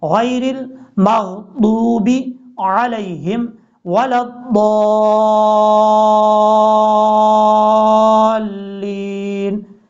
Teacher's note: اس طریقے سے ضاد کو آپ نے آگے الف جب ادا کرنا ہے تو ضاد کو لمبا کر کے لام کے ساتھ کنیکٹ کرنا ہے، اور اس طریقے سے کرنا ہے کہ لام کے اوپر جو شد ہے وہ شد بھی صحیح طریقے سے ادا ہو